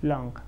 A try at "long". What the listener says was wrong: Okay, long, long. Oh, that sonido, the j al final. Oh, well, this is very, very common. I hear long, mucho, long, that j sonido. Remember, in English, the j no existe.